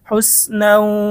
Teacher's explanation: পেশ হুস নুন ওয়াও দুই জবর নাও হুসনাও ঈদগামে বা গুন্না তানবিনের পরে বা গুন্নার হরফ ওয়াও এসেছে গুন্না সহ মিলিয়ে পড়তে হবে